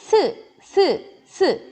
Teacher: 혀 끝이 아래 이와 잇몸에 닿습니다. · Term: 시옷